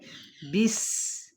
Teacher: سین پہ ہم نے کیا کرنا ہے، سیٹی کی آواز نکالنی